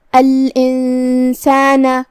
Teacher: اخفاء کا معنی ہے چھپا دینا، لہذا ہم نون کو بغیر ظاہر کیے ہوئے لیکن غنہ کے ساتھ یہ حکم کو ادا کریں گے